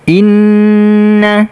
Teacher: Nun bertasdid kita dengungkan dengungnya keluar dari hidung kemudian kita tekan karena ada tasdid